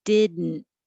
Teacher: I'm holding my tongue. The D and the N are made in the same position. So once you say did, hold it there and just go, didn't.